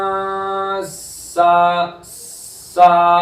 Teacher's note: مشدد ہے سین تو اس کو تھوڑا سا رک کر پڑھیں گے